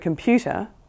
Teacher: We're so used to just writing the word computer with P followed by U that we don't think about the fact that there is a Y sound in between the P and the U